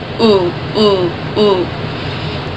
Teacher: Your tongue's going to be as high in your mouth as it can be, and your lips are going to be rounded. And remember, it's towards the back, so ooh, ooh, like food.